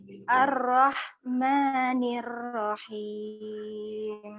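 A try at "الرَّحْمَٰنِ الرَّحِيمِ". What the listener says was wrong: Allah, coba rohnya ditebalkan sedikit.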